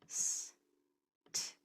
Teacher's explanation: The sounds are s, t. Notice they're voiceless.